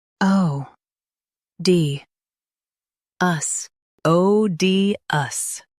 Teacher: Stress O and keep D light.